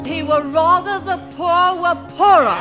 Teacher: R dropping and it's a feature of several well-known dialects